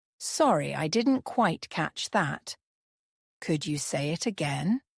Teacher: The intonation on catch that might fall slightly while say it again rises.